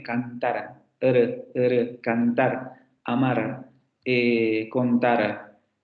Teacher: luego la vibrante simple alveolar sonora